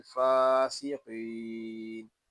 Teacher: फा को एक अलिफ तक खींच कर पढ़ेंगे क्योंकि यहाँ खड़ा जबर है